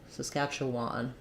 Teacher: the E and then last vowel is a Schwann Saskatchewan so probably a little secondary stress on the final syllable